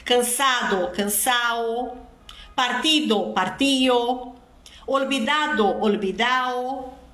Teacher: a aspiração da letra D do particípio, usada somente no sul da Espanha